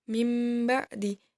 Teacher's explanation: Sedangkan menurut istilah, iklab yaitu apabila ada nun sukun atau tanwin bertemu huruf ba, maka bunyi nun sukun atau tanwin berubah menjadi mim disertai dengung sepanjang 2 harokat.